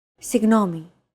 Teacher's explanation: this character isn't pronounced using an English G sound at all it's like a very soft continuous and loosely held G almost as if you're gargling but don't make it sound too throaty there's no such sound · your tongue and the back part of your mouth should be barely separated from each other while you blow a steady stream of air between the small separation